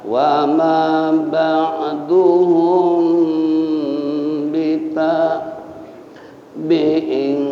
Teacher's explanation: ikhfa sapawi tahan mim ketemu ba